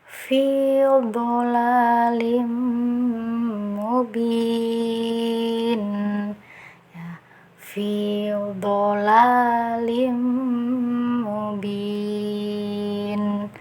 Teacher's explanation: Kita fokus di huruf dodnya, pangkal lidah naik ke atas, kemudian rapatkan lidah ke langit-langit ya. Jadi suaranya itu lebih tebal lagi